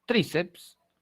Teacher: La mayor fuerza de voz está en la penúltima sílaba, es una paroxítona, y el margen postnuclear es PS, ¿no?